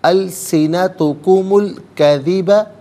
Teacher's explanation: السنتکم میں میم پر پیش ہے، اسے الکذبہ کے لام ساکن کے ساتھ ملائیں گے، درمیان میں سے الف نی حمزہ کو حذف کیا جائے گا